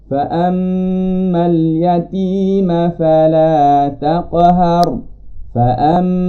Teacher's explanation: Fa'am, bunyi itu keluar dari hidung. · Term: bunyi dengung